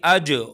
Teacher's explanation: اج جیم پر قلقلہ ہوگا